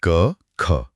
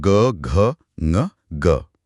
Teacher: हर परिवार के पहले दो अक्षर जैसे क, ख या च, छ अघोष होते हैं। आप गले पर हाथ रखकर बोलिए, कंपन बहुत कम या नहीं होगा।